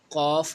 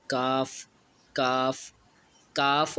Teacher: اس تالوں کے نرم حصے سے قاف یعنی نقطوں والا قاف ادا ہوگا، اور جو سخت حصہ ہے اس سے کاف ادا ہوگا۔ کاف، کاف، کاف اور قاف میں فرق ہے۔